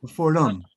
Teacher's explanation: Instead of being the open I, it goes to the schwa.